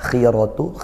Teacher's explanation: Ini huruf tebal tapi karena dia kasrah maka berkurang tebalnya seperti itu.